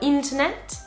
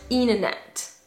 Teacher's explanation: en British English, le T, quand vous avez un mot qui est composé d'un T au milieu du mot ou à la fin d'un mot par exemple, normalement vous le prononcez. · On prononce le T, alors qu'en American English, on va pas prononcer le T de la même manière, ça va être un flap T qui va presque ressembler à un D